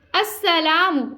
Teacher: सीन को सिटी के sound के साथ और लाम को खींच के अदा करना है।